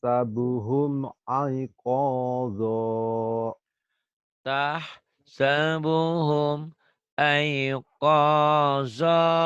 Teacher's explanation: 2 fathah dibaca 1 jika dihentikan. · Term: mad iwad